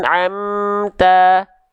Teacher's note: mim itu punya sifat yang namanya adalah tawassut artinya Dia sedikit mengalir suaranya Wain Rin wasadidilin Umar ya jadi amnya dia terus jalan sedikit